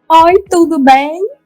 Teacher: o dialeto, estereotipado do nordestino, né? Que é falar tudo com vogal aberta. A gente fala mesmo, grande parte de nós fala com vogal aberta, mas assim, o povo fica assim: oi, tudo bem?